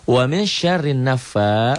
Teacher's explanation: Alif lam tidak dibaca, disebut juga alif lam samsiah. · fa-nya mad asli dibaca panjang satu alif